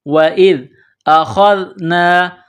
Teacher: ذال زبان کا سرہ تھوڑا سا باہر نکالیں گے، ذال کو پڑھتے وقت ذال کو نرم پڑھیں گے · یہ خا ہے، خا کو موٹا کرنا ہے، خا کو ذال کے ساتھ پلس کرنا ہے.